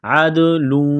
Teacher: دال ساکن ہے، حروف قلقلہ ہے تو دال پر قلقلہ کریں گے